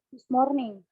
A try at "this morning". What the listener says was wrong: This morning. This morning. Bukan this morning, tapi this morning. R-nya jangan dibaca. This morning. This morning.